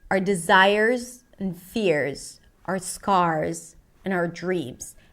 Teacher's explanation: the word our reduces to R. Sounds like the word R or the letter R. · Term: reduced words